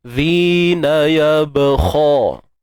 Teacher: untuk ba ni qalqalah sughra, lantunan kecil ataupun lantunan yang lemah. · zi kita keluarkan sedikit ujung lidah kita, mak asli ya.